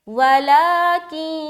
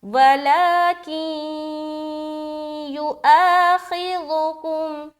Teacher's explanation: اب غنہ آپ کو معلوم ہے کہ ناک میں تھوڑی دیر آواز کا روکنا غنہ کہلاتی ہے، تو آپ ملاتے ہوئے ناک میں تھوڑی دیر آواز روک لیں تو یہ ادغام ناقص کا قاعدہ ادا ہو جائے گا، جیسے کہ وَلَكِنْ، ادغام ناقص ادا ہو گیا، وَلَكِنْ يُؤَاخِذُكُمْ، پھر الف مدہ خی کم، خواہ کو موٹا کر کے ادا کریں گے، ذال کو نرمی کے ساتھ اکاف میم پیش کم، وَلَكِنْ يُؤَاخِذُكُمْ، يُؤَاخِذُكُمْ، ذُكُمْ، سمجھ آ رہی؟